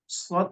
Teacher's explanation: SH dan Sin itu tempat keluarnya sama yang membedakan antara Shad dan Sin adalah huruf Shad lebih tebal dan cara menebalkannya adalah dengan menaikkan